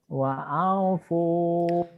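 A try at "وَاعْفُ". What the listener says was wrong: bukan wa'au pu. Jangan ke hidung. Artikulasi A-nya jelas. Bapak itu perlu latih itu. Karena mohon maaf kalau di Jawa kadang-kadang suka ada sengok ke hidung ya kalau nggak salah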